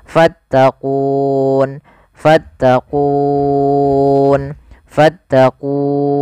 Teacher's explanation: Awalnya kan ku 2 harokat, karena ada sukun arid menjadi kita boleh membaca dengan 3 pilihan, boleh 2 harokat, boleh 4 harokat, boleh pula 6 harokat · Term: mad arid disukun